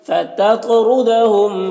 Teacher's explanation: تو کو پر پڑھیں گے اور تو میں قلقلہ کریں گے